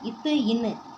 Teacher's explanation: மேல்வாய் பல்லின் அடிய நாக்கின் நுனி பொருந்துவதுனால பிறக்குது